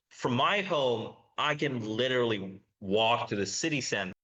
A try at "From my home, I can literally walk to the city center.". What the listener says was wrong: Some of the stress timing is really good there. I like the weak form of can.